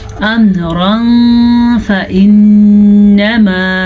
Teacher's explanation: قَضَى أَمْرًا فَإِنَّمَا، یہ تنوین ہے، تنوین کے بعد فا حروف اخفا میں سے آیا ہوا ہے، تو تنوین کو ہم چھپے ہوئے غنے کے ساتھ پڑھیں گے · نون مشدد کا غنہ ادا کریں گے کیونکہ نون کے اوپر شد ہے